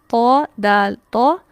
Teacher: जुबान की नोक सिर्फ ऊपर वाले जो दो दांत है उनकी जड़ को लगेगी